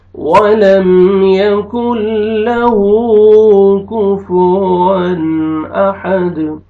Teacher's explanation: واو پہ آپ لپس کو راؤنڈ میں لے کے جائیں گے اچھی طرح، تاکہ واو اچھی طرح ادا ہو